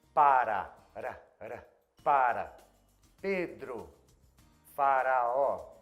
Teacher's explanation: No Brasil a gente usa um R que a gente chama de tap or trill, que é quando você bate a língua rapidamente no céu da boca perto dos dentes da frente. Para falar para, Pedro, faraó, esse R é bem comum em português.